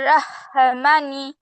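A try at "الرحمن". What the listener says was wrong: তারপর মা টান হয় নাই তো আপু, ভালো করে বলো।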